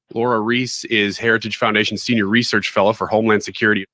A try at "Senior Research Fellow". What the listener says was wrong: Did you call her a fella? No, you called her a research fella.